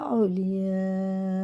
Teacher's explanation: نون میں غنہ ہے، واو ساکن سے پہلے زبر ہے، یہ حرف لین ہے، اور یہ مد متصل ہے۔ یہ 5 الف کے برابر کھینچ کے پڑھیں گے